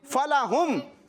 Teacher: اب دیکھیں فَلَهُمْ کی ابتدا جس حرف سے ہو رہی ہے وہ بھی حرف شفوی, انتہا جس حرف پر ہو رہی ہے وہ بھی, کیونکہ ابتدا فا سے ہو رہی ہے فا بھی حرف شفوی, انتہا میم پر ہو رہی ہے وہ بھی حروف شفوی میں سے ہے